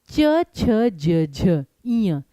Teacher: इसमें आपकी जीभ सीधी थी। तो जब आपकी जीभ सीधी रहती है और मुंह के ऊपर वाले भाग को टच करती है उसे कहते हैं तालव्य ध्वनियां। तालु स्थान कहते हैं।